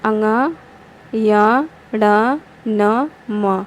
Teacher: उच्चारण में नाक से हवा बाहर निकल जाती है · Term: नासिक्य व्यंजन